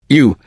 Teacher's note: Round your lips again and make the sound deep like ooh.